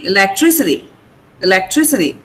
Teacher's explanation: The stress is on tree.